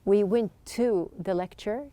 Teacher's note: You can see that there's just one T sound.